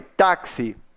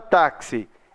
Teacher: a palavra taxi ela é paroxítona que a sílaba tônica dela é a penúltima